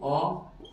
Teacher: ओ बोलने पर भी हमारे होठों की जो आकृति होती है वो गोल हो जाती है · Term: गोलाकार